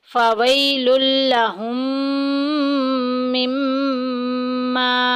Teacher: دوسری میں مدغم کر دیں گے، ادغام شفوی کا قاعدہ جاری ہو رہا ہے، یعنی کہ ملا دیں گے، تو غنے کے ساتھ پڑھیں گے